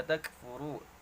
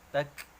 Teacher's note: ada kaf sukun, di situ ada desis, ada hams ya.